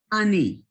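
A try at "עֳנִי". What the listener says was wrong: Okay, now you see that kamatz is bigger. That's an exception. That word is pronounced oni. That last word. Instead of ani, like I, it's oni.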